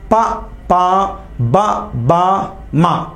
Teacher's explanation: ప ప బ బ మ అంటే పెదాలు కలుస్తున్నాయి. పెదవులను ఓష్ఠ్యాలు అంటారు కాబట్టి వీటిని ఓష్ఠ్యాలు అంటారు.